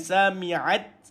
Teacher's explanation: Matikan ta. Ada sifat hams. Angin dikeluarkan. Dan matikan ti dulu baru keluar angin.